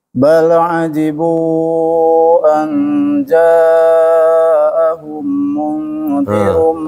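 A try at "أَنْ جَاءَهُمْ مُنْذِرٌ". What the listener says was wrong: Ada dua tuh ditahan. Pertama hum mim ketemu mim dengan mim nun ketemu zal.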